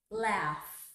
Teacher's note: That's an F. We produce it with a puff of air. Laugh. That's unvoiced.